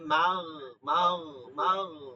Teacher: গইনটা হবে খয়ের মাখরাজ, ফলকের শেষ, নরম মোটা, নরম এবং কি মোটা হরফ।